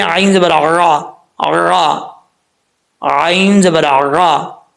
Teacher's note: گلے کے درمیان سے جو ہے وہ عین نکلتی ہے، جس کو وسط حلق کہا جاتا ہے، یعنی درمیان کا حلق۔